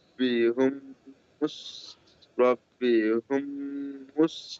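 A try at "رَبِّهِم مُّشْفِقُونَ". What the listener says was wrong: হোম লয়, জের আছে এখানে, জের, রব্বিহিম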